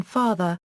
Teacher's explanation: the open back unrounded vowel as in father, its original, Latin and Greek, sound